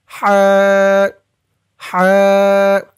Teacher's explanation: হার আওয়াজটা গলার ভিতর থেকে চিকুন হয়ে বের হবে। আমার সাথে বলুন, হা হা।